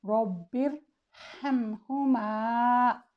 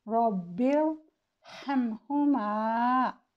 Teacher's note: را ساکن سے پہلے کسرہ دوسرے کلمہ میں ہو تو بھی را کو تفخیم سے پڑھتے ہیں